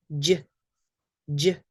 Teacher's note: It might remind you of the CH sound. Ch, ch, but with a voice. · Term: J sound